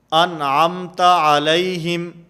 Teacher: جیسے سورۃ الفاتحہ کے اندر ہے صراط الذین انعمت، انعم نون ساکن، اور نون ساکن کے بعد حروف حلقی میں سے عین موجود ہے، اس لیے یہاں پر غنہ نہیں ہوگا، انعمت ایسے نہیں ہوگا، نون کو بالکل ظاہر کر کے پڑھیں گے